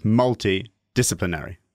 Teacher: You got to land on the first and fifth syllable of a 7-syllable word, and I think that's just really confusing because you've got that long string of unstressed syllables in the middle